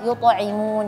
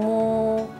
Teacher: Jadi permukaan bibirnya itu jangan terlalu lebar, jangan terlalu gede. Jadi dikerucutin lagi atau dicucu lagi gitu ya. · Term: dhammah yang sempurna